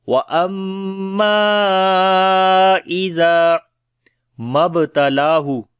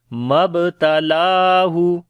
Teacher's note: میم با کے اوپر قلقلہ کریں گے، لام کو لمبا کریں گے